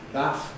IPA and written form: bæθ (bath)